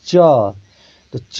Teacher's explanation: जैसे हमने बोला च बोलते समय हमारा जीभ तालु को स्पर्श किया तो इसका उच्चारण स्थान हो गया तालु